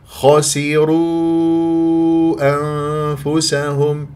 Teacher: الخاء مفخمه مرتبه ثانيه مفتوحه سين مكسوره والراء مفخمه لانها ماذا مضمومه